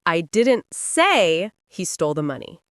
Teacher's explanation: Meaning someone else said it, but I didn't. The stress isolates the person speaking.